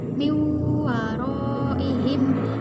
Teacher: nun sukun bertemu dengan huruf wawu karena huruf wawu ini adalah huruf miliknya Idgham Bighunnah maka cara membacanya dimasukkan dan disertai dengung